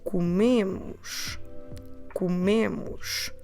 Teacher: And our stress is on the me.